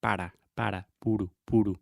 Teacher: the tip of your tongue is touching the roof of your mouth when you say para, puro, puro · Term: the Portuguese R